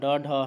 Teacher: मुर्धा से ड और ढ का उच्चारण होता है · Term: मूर्धन्य